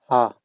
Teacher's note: इस हा का जो उच्चारण स्थान होता है वो क्या होता है? वो होता है कंठ। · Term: काकल्य वर्ण